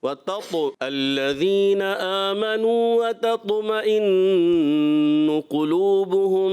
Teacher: جب آپ قلقلہ کریں، قلقلہ میں کوشش کریں کہ طو کی آواز کلیئر ہو · قلقلہ واضح ہو، ٹھیک ہے نا، واضح کرنا ہے. طو صفت استعلاء کو بھی ادا کرنا ہے اور اطباق کو بھی ادا کرنا ہے